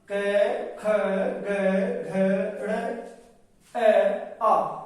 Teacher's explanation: क्योंकि कंठ से, गले से बोले जाते हैं, इसलिए इनका उच्चारण स्थान कंठ है। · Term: कंठे वर्ण